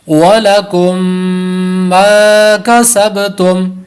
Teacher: ماں بھی الف مدہ ہے، لمبا کریں گے 1 الف کے برابر ، اور سب پہ کلکلا ہے، یہاں پر کلکلا کریں گے،